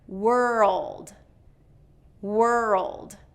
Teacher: if you don't get that dark L in there, it's gonna sound like word, word. So you want wer-uld, okay?